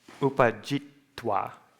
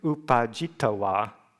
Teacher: a Thai person often has a difficulty pronouncing two consonants together. So they'll add a vowel in between. So it would be jitawa.